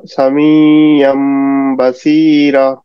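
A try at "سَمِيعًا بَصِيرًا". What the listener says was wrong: হ্যাঁ, র একটু টানবো, হ্যাঁ, মানে এক আলিফ টেনে।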